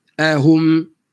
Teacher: Kenapa kena bagi depan? Mim tak dimuncungkan. Sebab mim bukan baris depan. Mim dibaca dengan mati.